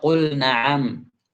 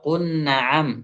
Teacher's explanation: Lamnya itu tidak bisa diidghamkan ke nun.